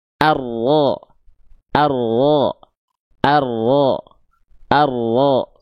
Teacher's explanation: Sifat huruf ro ya punya sifat inhiraf nempel ke depan. dorong ke dalam. · Kalau enggak e biar mengurangi si getaran R-nya itu ar nempel ke depan seret ke dalam. Jadi mengurangi jumlah getaran pada huruf ro yang ada pada sifat takrirnya.